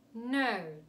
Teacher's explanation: the O sound in a British dialect is elongated